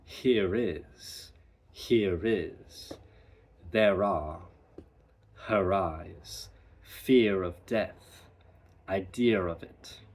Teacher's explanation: So there will be some R coloration at the end of a word if the following word begins with a vowel. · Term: intrusive R